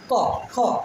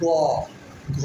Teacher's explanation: ক, খ, এগুলো দেখো উচ্চারণ একটা হালকা সাউন্ড আসছে, কিন্তু আমরা যদি উচ্চারণ করি গ, ঘ, তোমার একটা গম গম, একটা গম্ভীরপূর্ণ আওয়াজ